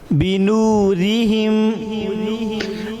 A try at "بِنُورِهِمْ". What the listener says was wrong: بنورہم، ایسے کھینچنا نہیں، دبانا نہیں، بنورہم، یعنی کہ بنورہم، را پہ آواز بلند کرنا، یہ درست نہیں، بنورہم،